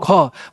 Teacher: ख और घ बोलने में आपका क्या था, ज्यादा एयर निकल रहा था, तो उसको महाप्राण बोलते हैं।